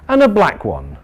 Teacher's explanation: that falling intonation tells us that's it